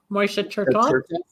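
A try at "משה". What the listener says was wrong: It's not Moishe, it's Moshe, the Hebrew pronunciation, not the Yiddish, right?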